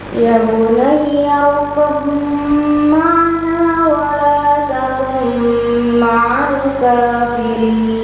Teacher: Itu ada ba sabdu dengan ba sukun dengan mim. Maka suaranya ba dihilangkan langsung masuk kepada mim.